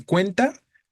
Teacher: En cuenta, la sílaba tónica sería cuen, la penúltima. Y sabríamos que en ese contexto es grave terminado en vocal.